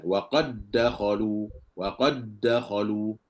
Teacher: kalau sambung mesti Dal kena masuk dalam Dal · Kalau kita baca sambung, maka perlu kita kena idghamkan dal ke dalam dal. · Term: idgham huruf yang sama